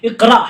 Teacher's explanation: اقرا حمزہ ساکنہ کے پڑھنے میں جھٹکا ہوتا ہے